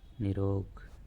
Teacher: दीर्घ हो जाएगा क्या बनेगा नी रस आगे देखिए निर रोग र के बाद र आ रहा है तो नी का जो ई है वह हो जाएगा बड़ा और र का लोप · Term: रे लोप संधि